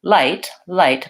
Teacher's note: L in principle the word light when I say light light my tongue goes behind my teeth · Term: front L